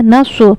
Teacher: स्वाद हुफ मुस्तालिया के सात हुफों में से है। पुर पढ़ा जाएगा नस। इसको हमें नस नहीं पढ़ना।